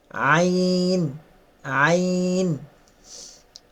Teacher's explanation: এটা গলার ভিতর থেকে, হলকের মধ্যখান থেকে